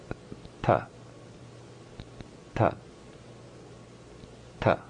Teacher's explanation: Position 4, behind the teeth. The tongue is touching where the upper teeth meet the gums.